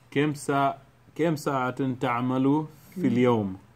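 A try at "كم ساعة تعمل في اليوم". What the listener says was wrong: Kam. Not Kim, not Kim's tea shop. That's in the southwest.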